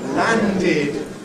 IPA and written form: ˈlændɪd (landed)